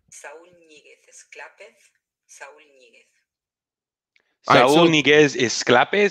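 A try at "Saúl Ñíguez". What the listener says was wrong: No, it sounds like Saul Inieguez. So the N is Inye, not just N. It's Inye. That's what the little acento on top means.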